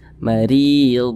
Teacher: baca kasrah ya yang kemudian berada di tengah bacaan seperti ini maka huruf rnya itu dibaca Dibaca tipis dibaca tarkik mari mari kita baca tipis marid kemudian Ri Ri dibaca panjang · maka huruf ra-nya itu dibaca tipis, dibaca tarkik